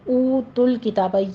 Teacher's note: یہ والا او پڑھنا ہے پورا، دونوں ہونٹوں کو گول کرتے ہوئے، واو مدہ ہے، اس کو آپ نے 2 کاؤنٹ کرنا ہے۔